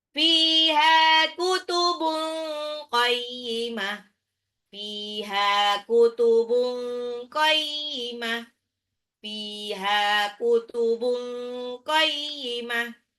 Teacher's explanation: Fiha, fa-nya 2 harokat, ha-nya juga matobi'i, kutubun qayyimah, tanwin ketemu qaf itu ikfa, ya, disamarkan tanwinnya. Fiha kutubun qayyimah.